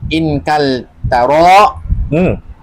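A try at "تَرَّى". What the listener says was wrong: Roknya ditasdid. Makanya harus tasdid tarro.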